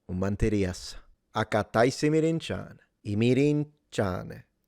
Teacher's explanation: we go down very quickly and suddenly, and it kind of sounds like we don't care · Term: Western Sicilian